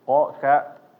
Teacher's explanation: Ko, ka sama-sama di belakang tapi maju sedikit kalau ka-nya.